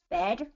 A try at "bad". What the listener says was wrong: you got to get more of an A A say the sound for me